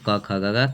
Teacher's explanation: कंठ से बोली जाती है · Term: कंठ ध्वनि